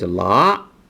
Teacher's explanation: speakers normally cannot pronounce the rising tone correctly okay so it's you start with a lower pitch and then eventually you have a higher pitch towards the end